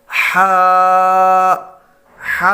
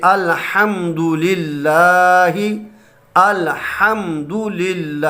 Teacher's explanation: ہا جو ہے یہ حلق کے درمیان والے حصے سے ادا ہوتا ہے۔ اس کے لیے آپ اپنے منہ کو کھول دیں تو ہا ادا ہو جائے گا۔